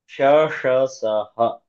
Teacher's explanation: ಶ ಷ ಸಹ ಗಳಿಗೆ ಈಶದ್ವಿ ವಿವೃತಂ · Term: ಉಷ್ಮ ಅಕ್ಷರಗಳು